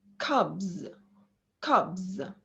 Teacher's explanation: we have the vowel a bit longer before the voiced consonant